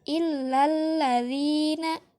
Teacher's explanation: Yang ketujuh adalah alif lam syamsiyah, karena alif lamnya tidak dibaca dengan jelas. Jadi ketika membaca illalladzina, alif lamnya tidak dibaca.